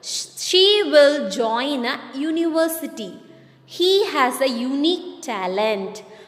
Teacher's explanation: He has a unique talent. These words university and unique start with U, which is a vowel, but the beginning sound of the consonant Y as in U.